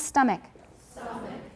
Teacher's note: Remember not to aspirate the T.